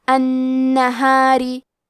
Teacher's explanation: یہاں را کا حکم ہے ترقیق، تو ہم حرف را کو پتلی آواز میں پڑھیں گے